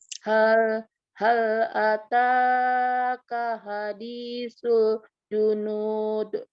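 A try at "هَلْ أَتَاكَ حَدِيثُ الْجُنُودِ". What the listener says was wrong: H yang tebalnya itu agak ketipisan. H yang ini kurang, tipisnya kurang. Jadinya nyaru nih sama. Mirip-mirip. Walaupun sudah mulai nyampe di H ya. Cuman masih belum terdengar pedesnya. Yang ini belum terdengar gemaknya.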